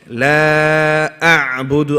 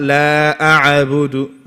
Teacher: The ayn is not a qalqala letter. Don't bounce it.